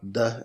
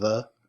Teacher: pronounced at the very same spot behind the teeth. One is a stop, D, and the other is a continuant